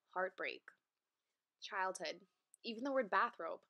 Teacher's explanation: a metrical foot consisting of two accented syllables